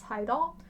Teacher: with that ending R, a lot of times with Korean, they'll just leave the R off. So that's why it's Haida.